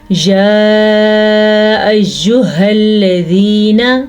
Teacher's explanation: آگے یا مدہ ہے، نون کو لمبا نہیں کرنا